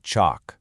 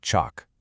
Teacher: if you're in the UK, you're probably going to say it with a longer vowel, kind of like chalk. But over in the US, it's a bit shorter, a bit flatter, more like chalk. It's a tiny difference for sure, but it's our first clue that this simple word isn't so simple after all.